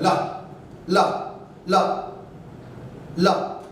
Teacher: जीभ के दोनों साइड से हवा बाहर निकल जाती है बिना किसी टकराए हुए, मतलब पार्श्व मतलब किनारे से निकल जाती है। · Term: पार्श्विक व्यंजन